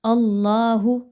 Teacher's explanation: اللہ، حرف جلالہ جو ہے اللہ، اس سے پہلے حمزہ کے اوپر زبر آ رہی ہے، اس زبر کو اس کے ساتھ ملاتے ہوئے آپ نے اللہ کی جو لام ہے، اللہ کے حرف کی جو لام ہے، اس کو آپ نے موٹا کر کے پڑھنا ہے، باریک نہیں پڑھنا